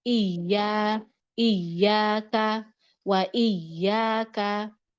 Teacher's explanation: tasydid itu naik saja suaranya bukan ditahan seperti bigunah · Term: hukum nabr